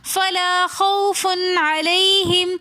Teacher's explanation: علیہم میں بھی یا لین ہونے کی وجہ سے ہم نے اس کو نرمی کے ساتھ اور جلدی سے پڑھا